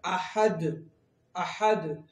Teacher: وقف کی حالت میں دال قلقلہ ہو جائے گا، احد، احد، ہلاکہ پڑھیں گے، جنبش دیں گے، حرکت دیں گے، یعنی ہلاکہ پڑھیں گے، احد۔